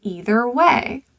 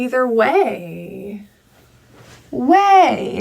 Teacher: Notice on a one-syllable word, I'm going both up and down in pitch. That's primary stress.